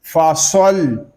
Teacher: صاد یہ حروف مستعلیہ میں سے ہے، اس کو پر یعنی موٹا پڑھیں گے. اگر ہم اس کو باریک پڑھیں گے تو پھر سین کی مشابہت پیدا ہوگی، تو ہم اس کو پڑھیں گے پر یعنی موٹا کر کے.